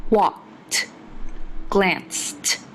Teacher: In walked and glanced, the ed makes a t sound.